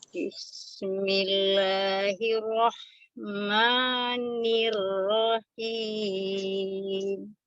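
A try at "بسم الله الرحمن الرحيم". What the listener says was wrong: Jadi huruf sin itu tidak termasuk huruf qalqalah, tidak bismi ya. Tapi dia alirkan sifatnya al-hams.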